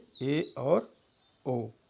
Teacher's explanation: तो अर्धसमृत स्वर का उच्चारण करते समय जीभ बंद और खुली स्वर वाली अवस्था के बीच उठी होती है, लेकिन बंद स्वर वाली स्थिति के नज़दीक होती है अपेक्षा खुली स्वर स्थिति के, जिससे जो है अर्ध समृत स्वर का उच्चारण होता है, जैसे ए और ओ, जैसे ए और ओ। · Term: अर्ध संवृत